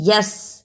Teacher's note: یس، جب ہم نے یس کہا تو یا زبر سین یس، سین پر سیٹی کی آواز نکلی